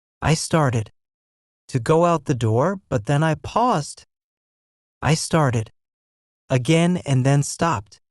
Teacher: The guy said started with an id sound, paused with a d sound, and stopped with a t sound. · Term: three sounds of e d, 3 sounds of ed